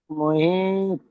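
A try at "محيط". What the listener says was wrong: মুহিত বলে আওয়াজ, আওয়াজ চেপে দিলে হবে না, আওয়াজটা ছেড়ে দিতে হবে। মুহিত। জিভ ছেড়ে দেন সঙ্গে সঙ্গে, মুহিত। মুহিত। জিভ ছেড়ে দাও সঙ্গে সঙ্গে, আওয়াজটা আওয়াজটা পিছিয়ে আসবে। যেমন মুহিত।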